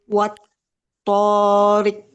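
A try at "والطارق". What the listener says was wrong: Lebih mantul sedikit lagi. Wat toriqo.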